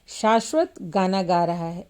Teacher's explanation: इसमें शाश्वत शब्द पर बल देने यह स्पष्ट है कि शाश्वत ही गाना गा रहा है कोई दूसरा नहीं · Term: शब्द बलाघात